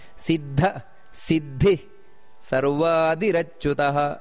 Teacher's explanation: ಸಿದ್ದ ಅಲ್ಲಿ ಮಹಾಪ್ರಾಣ ಇದೆ ಅದರೊಟ್ಟಿಗೆ ವಿಸರ್ಗ ಸಮೇತ ಇದೆ